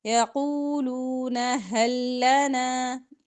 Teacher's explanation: لام اور لام کو ملا کے اکٹھا پڑھیں گے